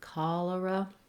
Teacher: We have first syllable stress in cholera, so it's long, short, cholera.